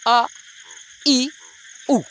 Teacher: ऐसे स्वर जब हम लोग उच्चारण करते हैं तो हमारी मांसपेशियों में मतलब जीभ की मांसपेशियों में आपका तनाव बहुत ही कम होता है। कहने का मतलब उतना ज़्यादा मेहनत करने की ज़रूरत नहीं होती जब भी हम लोग शिथिल स्वर का जो है उच्चारण करते हैं।